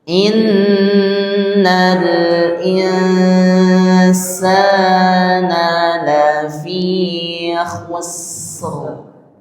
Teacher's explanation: rnya harus tafkhim tebal ya karena huruf sebelumnya itu dommah